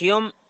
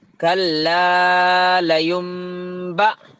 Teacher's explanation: کئی کو بولے تو نون ساکن ہے نہیں، وہاں نون ساکن کے بعد کیا لیٹر ہے دیکھو. با کے ہے با آیا تو نون ساکن کے بعد نون کو میم سے چینج کر دینا